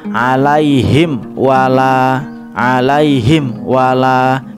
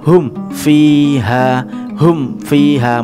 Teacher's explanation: Jadi ada penekanan di mimnya kemudian langsung menginjak huruf waw atau huruf fa-nya setelah huruf mim sukun. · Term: huruf istimewa